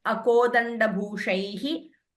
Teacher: because you are pausing after each line, please chant the Visarga completely.